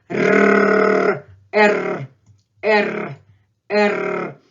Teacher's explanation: You just allow all the streams of your air exit your mouth and let that tongue, the end of the tongue, the tip of the tongue vibrate. It's a real vibration.